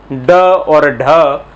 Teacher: मूर्धा की तरफ जीभ जाकर नीचे मुड़ती है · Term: उपक्षिप्त द्विगुण व्यंजन